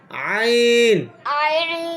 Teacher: উচ্চারণটা গলার মাঝখান থেকে আসবে, হলকের মধ্যখান মানে হচ্ছে গলার মধ্যখান।